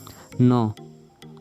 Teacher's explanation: न उच्चारण प्रयत्नको आधारमा नासिक्य हो। घोषत्वको आधारमा घोष हो।